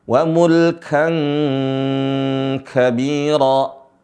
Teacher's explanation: Di sini boleh membacanya wa mulkan kayak suara ang. Ya, suara ang.